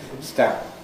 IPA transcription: stæ̃mp